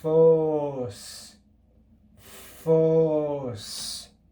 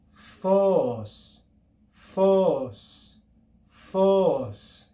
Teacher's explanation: on a circumflex accent we're going to read just as the symbol shows with a rise and a return to the original sound of the syllables